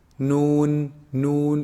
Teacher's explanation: noon is actually pronounced from the tip of the tongue when they hit you see the upper incisors behind them a